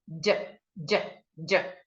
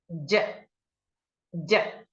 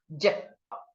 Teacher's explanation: Notice what happens inside your mouth as you articulate the sound. J, touching the roof of your mouth. While your teeth come together, and then you have the sound J.